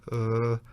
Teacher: you just relax and you use your vocal chords like uh you hear this sort of a dull and indefinite sound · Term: schwa